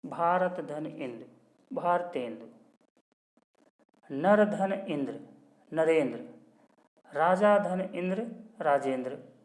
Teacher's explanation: अ के बाद ई या ई के आने पर वह ए में बदल जाता है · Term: गुण संधि